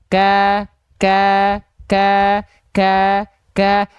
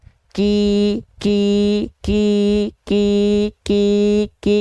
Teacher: percikan nafasnya itu seolah tidak ada atau kurang terasa